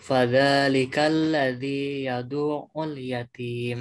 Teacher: Nah, ainnya langsung nempel ke huruf ainnya ya. Jangan sampai di jeda yadu'u.